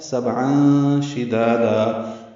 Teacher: سبعان میں با ساکن ہے، اس پہ قلقلہ ہے، عین وسط حلق سے ادا کریں گے اور اس میں اخفا ہے.